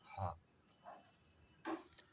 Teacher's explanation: काकल्य वर्ण यानी कंठ से उच्चारण किया जाने वाला वर्ण